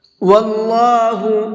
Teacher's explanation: اللہ کے لام کو منہ بھر کے پڑھیں گے